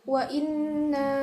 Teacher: termasuk bacaan gunah musyaddadah sebab ada nun bertasydid